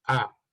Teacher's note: but in northern irish is ah okay it's open and the jaw goes down